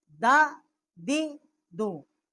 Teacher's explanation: دال زبر دا، دال زیر دی، دال پیش دو، دا دی دو، اور اس کا مخرج بھی ہے ثنایا علیہ کی جڑ سے جب زبان کی نوک ٹکر کھائے تو اس سے اس کا مخرج ہے دال کا